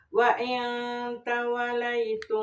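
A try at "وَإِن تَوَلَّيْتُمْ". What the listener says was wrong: Ditahan aya tasih tahannya. Tawallaitum.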